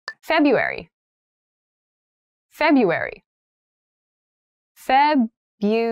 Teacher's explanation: that first r isn't really pronounced